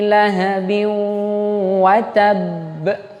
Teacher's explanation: Lalu lahabi watab itu idgham bi gunnah, berarti dia ditahan dan dimasukkan ke hidung. Idgham itu artinya melebur.